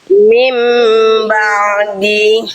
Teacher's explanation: Kesalahan Bunda di poin e poin du menambahkan suara tambahan berupa pantulan pada ain sukun itu adalah hal yang keliru. Ain enggak punya sifat qalqalah. Jadi enggak boleh dipantulkan. · Ain juga di buku dijelaskan harus sedikit mengalir suaranya, jangan sampai terputus karena sifatnya tawasud bukan syiddah.